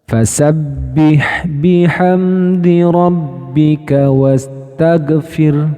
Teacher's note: Yaitu tertahannya suara saat mengucapkan huruf ghain sukun. Jadi, kesalahan yang sering terjadi adalah pada kata atau pada huruf ghain yang sukun, teman-teman.